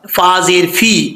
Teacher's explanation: फा का मखरज पहले मैं कई दफ़ा बता चुका हूँ, फिर बता रहा हूँ कि ऊपर वाले जो दो दांत हैं उनका नीचे वाला जो किनारा है, नीचे वाले होंठ की तरी वाले हिस्से की जगह, तरी वाली जगह पर लगेगा तो ये फा पढ़ा जाएगा।